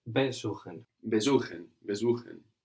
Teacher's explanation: We don't have the accent on be.